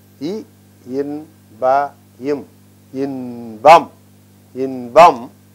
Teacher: E, in, pa, m, in, pam, because pa is preceded by other letters, this becomes ba, is pronounced as ba.